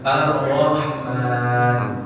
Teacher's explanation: Jadi getarannya cukup sekali aja. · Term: ro